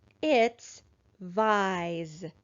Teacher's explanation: I wonder if this s is going to make a voiced or unvoiced sound. This s is coming after a vowel sound, so it's going to make a voiced sound.